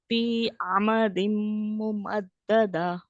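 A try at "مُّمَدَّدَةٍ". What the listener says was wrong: नो, हा को लाए ना बीच में आखिर में जो हा मुमद्ददा दा दा मुमद्ददा दाह नहीं करना, वो गलत है, क्योंकि उसके तो हा के भी मखरज से बाहर आ जाएंगे, लेकिन हा की आवाज आनी चाहिए, वरना आप हा का हर्फ जो है गायब कर रहे हैं, यानी कि मिटा रहे हैं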